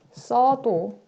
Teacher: 용언의 어간에 있는 으가 어랑 만나서 탈락되면 써도 라고 한다. 이렇게 단모음과 단모음이 만날 때 둘 다 쓰는 것은 부자연스럽기 때문에 하나를 탈락시킨다 라는 거예요. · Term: 으 탈락